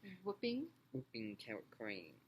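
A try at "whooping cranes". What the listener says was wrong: Cranes. Don't forget that S.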